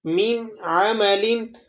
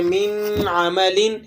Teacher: آپ نے یہاں پر اس کو بغیر غنے کے اظہار کے ساتھ پڑھنا ہے · آپ نے وہاں آواز کو ناک میں نہیں لے کر جانا، یعنی غنہ ادا نہیں کرنا